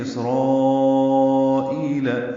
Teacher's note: سین ساکن پہلے باریک پڑھا جائے گا، اس پہ ہمس ہوگا یعنی سانس جاری رہے گی. را پر پڑھیں گے، اس پر کھڑا زبر ہے اور اس کے بعد حمزہ اسی کلمے میں آنے کی وجہ سے مد متصل ہے.